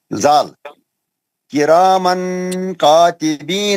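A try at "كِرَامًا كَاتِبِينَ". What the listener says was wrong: نہیں آپ کا اخفا صحیح نہیں ہوا کیسا پڑھنا ہے کیرامن ناک سے پڑھنا ناک سے لمبا کرنا غنہ کرنا کیرامن کاتبین نون کا آواز تھوڑا بھی نہیں آنا نون کا آواز تھوڑا بھی نہیں آنا کیسا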